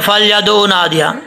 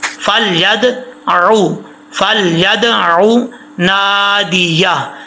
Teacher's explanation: اکثر لوگ پڑھتے ہیں فلیدعوا نادیہ، عین کو حمزہ نہیں پڑھنا، عین کو عین ہی پڑھنا ہے